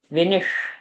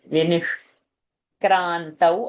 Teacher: half sh is a murdani so it should sound like a whistle